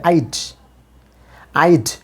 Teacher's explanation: ডা সাউন্ডটা যে অ্যালভিওলার সাউন্ড ডা, এটা কিন্তু ডা এর মতোই উচ্চারণ করবেন, বাংলা ড এর মতো উচ্চারণ করবেন না